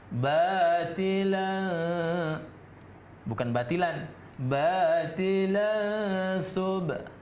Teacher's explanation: Tanwin apabila masuk ke huruf sin, maka itu menjadi samar dia, karena itu ikhfa hakiki namanya. Jadi nun mati atau tanwin bertemu dengan huruf sin, karena sin itu merupakan salah satu dari 15 huruf ikhfa.